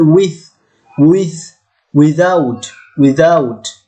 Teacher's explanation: dental, দুই দাঁত, মাঝখানে জিহ্বা, এটা নাম হচ্ছে ডেন্টাল